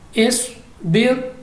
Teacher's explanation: स्वाद मुस्तालिया है मोटा पढ़ेंगे